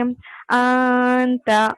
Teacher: ن ساؤنڈ کو چھپانا، ناک میں چھپانا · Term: اخفا